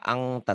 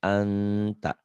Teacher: Ihfa ada bindeng, ada samar. Tapi nggak banget, nggak angta, tapi anta. · Ikhfa emang ada bunyi engnya, tapi jangan dominan. N-nya masih tetap.